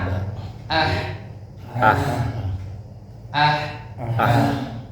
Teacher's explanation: huruf Ha ini tidak boleh ada khnya ya harus murni ha